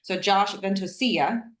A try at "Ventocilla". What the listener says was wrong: Not quite. No, not quite. So, fun fact with that, in Tagalog or our language, a double L is not a Y sound; it's a LIA sound. Ventocilia.